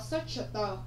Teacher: Từ search thì các bạn thấy là gì? Âm cuối cùng của nó âm chờ là âm bật hơi. Vậy các con sẽ có search tờ, đúng không ạ?